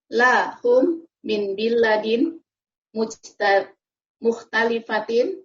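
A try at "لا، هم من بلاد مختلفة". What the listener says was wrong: Ya, la-nya dipanjangkan. La-nya ada alifnya, Ibu ya. Panjang. La hum min biladin mukhtalifatin.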